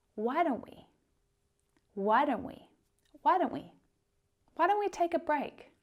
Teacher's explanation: Notice how the T sound, the t sound in don't, doesn't actually happen when we're speaking quickly.